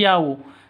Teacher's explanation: Yau itu sifat lin, lentur, lemes. Tidak boleh disentak, tidak boleh didengungkan, tidak boleh dipanjangkan.